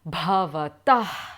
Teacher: the more precise kind of pronunciation would be bhavatah, with the aspirated sound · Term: visarga